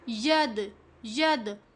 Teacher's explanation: دال ساکن ہے تو یہاں پر ہم نے دال کی آواز کو ہلا کر پڑھنا ہے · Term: قلقلہ